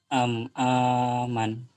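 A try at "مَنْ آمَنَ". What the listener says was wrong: aman. Salah. Salah. Lihat baik-baik. Am. Itu huruf apa pertamanya? Man ana man ana itu man. Kebalik-balik. Man amana.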